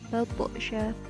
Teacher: Batsha dibaca qalqalah sughra sebab di situ terdapat huruf to yang sukun. Jadi cara bacanya dipantulkan, tetapi dia sukun bukan karena waqaf.